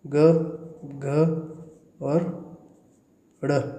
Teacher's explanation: ये ग, घ और ड बोलने से आपके गले में कंपन होता है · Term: घोष